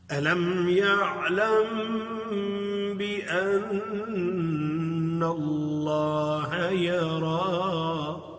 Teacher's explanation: نون پر تشدید ہے، یہ پوری آواز ناک کے اندر چلی جائے گی، اس میں ساتھ آواز منہ سے نہیں نکلے گی، پوری آواز ناک میں چلی جائے گی۔